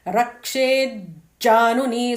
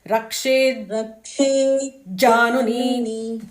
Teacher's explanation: So it will be Rakshet Januni. So the first Ja would not even come out of your mouth fully.